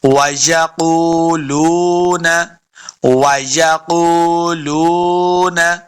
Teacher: وَيَقُولُونَ، قاف کو موٹا پڑھنا ہے، قاف حروف مستعلیہ سے ہے، قاف پیش واو قو، لام پیش واو لو، یہ دونوں واو مدہ ہیں، یہاں پہ ہم نے اس کو لمبا کر کے پڑھنا ہے، اور واو کو بھی ہم نے جب ادا کریں گے دونوں ہونٹ گول کرنے ہیں، تب واو کا مخرج صحیح ادا ہوگا۔